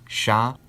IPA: ʃ